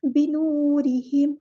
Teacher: واؤ مد آ گیا، الف کے برابر لمبا کریں گے یعنی 2 کاؤنٹس